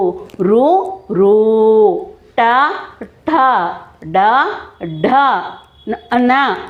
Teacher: తల నుంచి పుట్టి నాలుక సహాయంతో పలుకబడే అక్షరాలు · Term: మూర్తన్యాలు